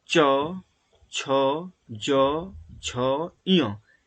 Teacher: इनका उच्चारण करते समय लगेगा जैसे तालु, जीवा तालु को स्पर्श करेगी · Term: च वर्ग